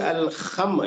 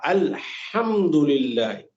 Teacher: بسم اللہ الرحمن, اسی طریقے سے الحمد, یعنی اس کو نہیں کہ الخم, یعنی ہلکا سا خا جو ہے نا وہ نہیں, بلکہ پیور ہا الحمدللہ. یہ ذرا ہے, یہ اس کو ذرا آپ توجہ دیجئے.